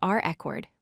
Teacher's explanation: Notice how the first syllable is much stronger than the second. · This time, the stress falls on the second syllable, cord. We say it is reCORD with emphasis on that last syllable.